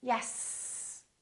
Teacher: If I want to, I can prolong that S for quite a long time. Therefore, the S sound, the S, is a continuant.